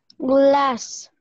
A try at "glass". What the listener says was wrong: Glass. Ahora me marcaste mucho la A. Que no suene tan gla.